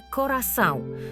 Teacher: Одной из ключевых особенностей являются носовые гласные, например, в слове «корасау», которые отсутствуют в русском языке.